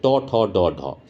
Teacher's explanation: জীব মূর্ধন্যর জায়গায় ঠেকছে ট ঠ ড ঢ উচ্চারণ করে দেখবে জীব যখন তালুতে ঠেকে